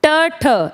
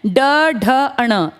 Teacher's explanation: ट ठ ये अघोष हैं, ड ढ अण ये सघोष हैं